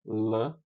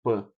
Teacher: O lateral é o P, o o L e o P é oclusivo. Enquanto um é alvéolar, lã, o outro é bilabial, pã. No E enquanto um é sonoro, o outro é surdo.